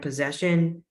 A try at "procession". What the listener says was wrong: pro, procession, procession, crow. See, there's an R there, procession.